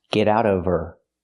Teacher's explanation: Now we need the V sound in of because we don't pronounce the H in her. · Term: We link the sounds